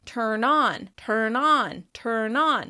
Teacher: And non becomes really clear because the vowel sound should be the clearest and easiest to understand. Because of linking, the N sound is going to be more dominant than the tur part of that phrasal verb.